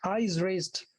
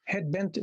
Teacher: So this could be spondee actually. Spondee meaning a foot of two syllables, but both of them stressed. So tam tam, like this.